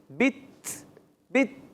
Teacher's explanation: تا میں کلکلا نہیں ہوتا، وہ شبہ کلکلا کہلاتا ہے